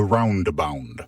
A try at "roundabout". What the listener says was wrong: it's roundabout correct roundabound you're saying roundabound it's roundabout